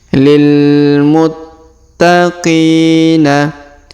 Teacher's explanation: berharakat tasdid maka kita tahan dan kita tekan Lil muttaqina kemudian huruf Qi kita panjangkan dua harakat karena terdapat Ya Sukun di depannya